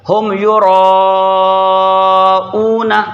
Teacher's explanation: جو نون پر زبر ہے اسے نہیں کھینچا جائے گا، اسے نہیں کھینچا جائے گا، کیونکہ زبر کو بغیر کھینچے، بغیر جھٹکا دیے پڑھا جاتا ہے۔